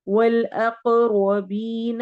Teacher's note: अक़ क़ाफ के ऊपर कलकला करेंगे